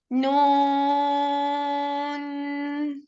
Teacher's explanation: 6 counts ہم اس نون کو کھینچیں گے